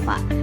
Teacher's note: Dalam pelafalan bunyi fa, bibir bawah mengikuti gigi atas dan dilafalkan huruf fa tersebut dengan mempertemukan bibir bawah pada gigi atas